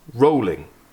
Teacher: So the emphasis is on roll, We don't emphasise ing endings in English, because it's irrelevant to the meaning. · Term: feminine rhymes